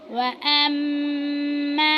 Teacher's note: मीम मुशद्दिद है, उसके ऊपर गुन्ना करेंगे